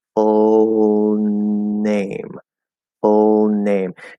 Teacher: It's going to be a dental N technically